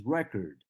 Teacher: here's a good example yes this word is a noun and if I say the first syllable stronger than the second syllable I make it a noun